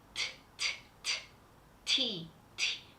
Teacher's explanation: T in English in English it is t t t t with the air coming out very strong